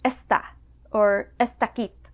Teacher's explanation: Especially after the negative word 'ez' you may hear D turn into T